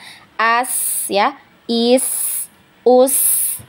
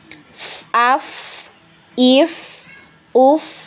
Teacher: rokhwa tadi itu ketika sukun maka aliran suaranya banyak